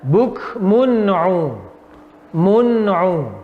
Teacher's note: Tanwin bertemu dengan ain. Cara membacanya bagaimana? Tidak usah mendengung, yaitu jelas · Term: izhar halqi